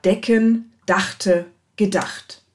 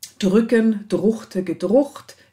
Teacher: Beispiele hierfür sind etwa decken, dachte, gedacht. Ja, CK wird gefolgt vom Dentalsuffix und aus sprachökonomischen Gründen wird hier zu Frikativ geändert.